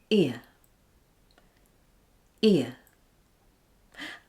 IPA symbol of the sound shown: ɪə